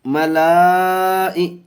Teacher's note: چار الف کھینچیں گے، مد متصل کا قاعدہ حرف مدہ کے بعد حمزہ اسی کلمے میں